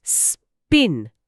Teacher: আরে তাই তো পি এর পর কোন এক্সট্রা বাতাস বের হলো না।